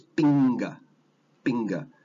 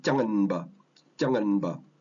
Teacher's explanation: the N sound, the nasal sound, the N, N, M, they're all produced in a different part of the mouth from the next consonant that's right next to it